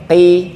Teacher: Yang penting enggak ada hamesnya, enggak ada angin yang keluar.